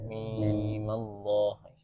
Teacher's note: Kasrah menjadi fathah karena fathah adalah harakat yang paling ringan.